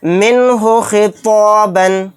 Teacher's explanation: نون کو ظاہر کر کے بلا غنہ کے جلد پڑھیں گے۔ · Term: اظہار